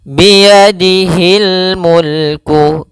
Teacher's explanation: kasr bertemu ya panjangnya dua harakat